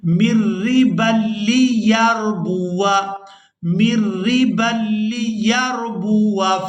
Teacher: اب یہاں پر ہم نے میم کو را مشدد کے ساتھ ملانا ہے، نون ساکن کو یہاں پر چھوڑ دیں گے ، میم را زیر مر، را زیر ری، مر ری، با · ہم اس الف کو الف مدہ والی ویلیو نہیں دیں گے، واو کو بغیر کھینچے ادا کریں گے